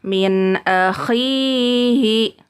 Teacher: Jadi pengucapannya tidak boleh nunnya dipantulkan. Ya, tidak boleh min akhihi. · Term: izhar halqi